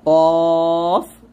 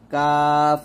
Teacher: এখানে দেখুন, খেয়াল করুন যে কফের ক্ষেত্রে সম্পূর্ণ জিহ্বার গোড়া লাগবে, আর কাফের ক্ষেত্রে একটু হালকা থাকবে